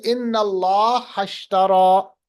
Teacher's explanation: تو اگر ہم اس کو ملائیں گے پڑھیں گے ان اللہ اشترا. یہ جو اشتری کا جو حمزہ کے نیچے زیر ہے یہ گر جاتا ہے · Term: حمزۃ الوصل